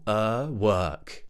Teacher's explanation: a very normal breathing neutral mouth uh w w work work make sure it's long enough in the middle